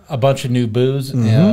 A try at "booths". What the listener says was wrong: Booths, not booze, booths. It sounded like you said a bunch of alcohol.